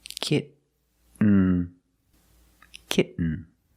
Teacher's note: You don't release, and then you fall to an N, kitten. When you make the stop T, the tongue is up, almost in the N position, so you don't have to change much.